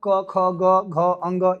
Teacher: क ख, ग, घ, अंग यह कंठ ही होता है।